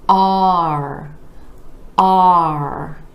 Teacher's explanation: We have the ah vowel sound moving into the R. You want to really drop your jaw for that ah vowel sound.